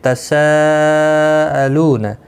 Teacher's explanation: تساءلون یہاں پر مد متصل ہے، چار الف کی مقدار کے برابر کھینچ کر پڑھیں گے۔